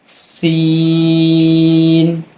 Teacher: اس کی مخرج کو نیچے گرا کر پڑھیں گے اور سیٹی کے ساتھ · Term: چھوٹی سین